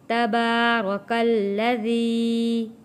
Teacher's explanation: تا کے اوپر زبر ہے، با کے اوپر کھڑی زبر، ایک الف کے برابر کھینچ کر پڑھیں گے۔ · حروف مدہ ہے، ذی ایک الف کے برابر کھینچ کر پڑھیں گے